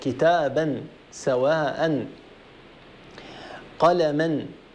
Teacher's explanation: تنوين النصب إذا وقفنا عليه يعوض بألف تمد بمقدار حركتين